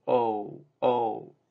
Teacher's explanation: So in English, O consists of two sounds. O and oo is kind of like a movement from O to oo. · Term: diphthong